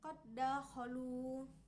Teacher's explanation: Contoh lainnya yaitu ketika huruf dal sukun bertemu dengan huruf dal berharokat fathah, maka cara membacanya pun sama, yaitu dengan cara memasukkan huruf dal berharokat sukun ini kepada dal berharokat fathah sehingga seperti membaca satu huruf yang ditasdidkan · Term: idgham mutamatsilain